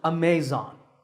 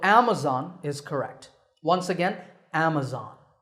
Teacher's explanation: this word is commonly mispronounced Amazon when you say it correctly the first syllable is app and the stress is on this first syllable